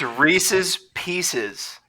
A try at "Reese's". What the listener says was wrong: Reese's with an S at the end. Reese's. It's Reese's.